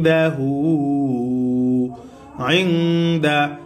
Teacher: নুন সাকিনের ইকফা গুন্নার সহিত মিলিয়ে পড়তে হবে